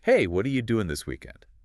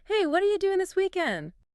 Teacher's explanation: what are you? connects and reduces to sound like would you and doing often loses that final G sound in casual speech becoming doing.